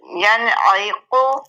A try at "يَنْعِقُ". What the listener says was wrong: عیقو نہیں، ایقو، ایقو، عین کی زیر کے ساتھ پڑھنا ہے نا، ینعیقو،